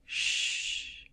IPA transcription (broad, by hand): ʃ